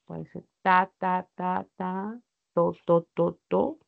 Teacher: la punta de mi lengua va a entrar en contacto este ápice con la cara interna de los dientes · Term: las dentales